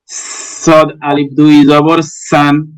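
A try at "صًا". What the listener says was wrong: জি মাশাল্লাহ।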